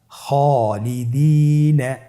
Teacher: খায়ের পরে যেহেতু আলিফ হরফটি রয়েছে তাহলে আপনার আলিফ হরফটিকে মোটা করে পড়তে হবে।